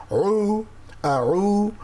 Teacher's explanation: আউ আইন কণ্ঠনালীর মাঝখানে চেপে চেপে উচ্চারিত হয়